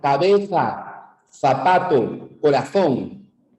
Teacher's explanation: un fonema en el cual la lengua está entre los dientes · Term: fonema interdental